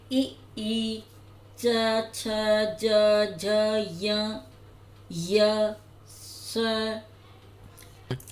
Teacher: आपकी जिह्वा जो है वो तालू से चिपकी हुई है, या तो नीचे या ऊपर, तो इसको इसलिए तालव्य कहा गया है। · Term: तालव्य वर्ण